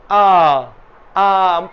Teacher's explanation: ঠোঁট বেশি খোলে বিবৃত ধ্বনি উচ্চারণের সময়